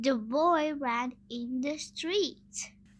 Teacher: the in the sentence has schwa, which is a weak vowel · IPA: /ə/